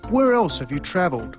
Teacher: the pitch of his voice fell at the end of both questions